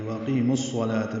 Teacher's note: قی یا مدہ ہے، 2 حرکات لمبا ہے، میم کو الصلاة کے صاد سے ملائیں گے، وَأَقِيمُ الصَّلَاةَ بیچ میں واو الف لام نہیں پڑیں گے، یہ ادغام شمسی ہے۔